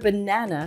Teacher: The first and the last A both make the schwa sound.